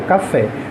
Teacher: O fé é a sílaba tônica da palavra café. E fé é a última sílaba.